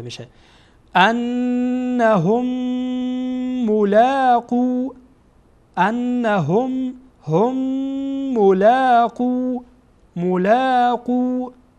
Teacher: این میم با میم دیگه وصل میشه و ادغام میشه